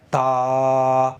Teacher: منہ کے اندر ہوا نہیں بھریں گے، یعنی تا موٹا نہیں ہونا چاہیے، آواز نیچے جانی چاہیے